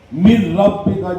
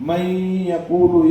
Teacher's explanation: من ربک میں صرف ادغام، اس کو ادغام بلا گنہ کہیں گے، اور من یقول میں ادغام اور گنہ، اس کو ادغام مال گنہ کہیں گے